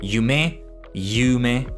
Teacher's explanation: I gotta put the emphasis on you instead of me